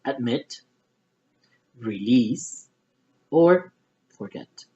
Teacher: Those are verbs that I'm going to stress in the second syllable.